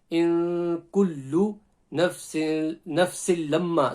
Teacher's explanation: So here we have a ikhfa. So a slight nasal sound, not a full gunna.